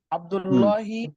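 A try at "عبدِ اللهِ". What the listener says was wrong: আরব দিতে হবে, এ আরব দিতে হবে, এ আরব না দিলে হবে না। আব্দুল্লাহি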